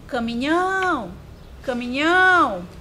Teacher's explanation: o nhão era a sílaba tônica e a posição dele é a última. Então, é uma palavra oxítona.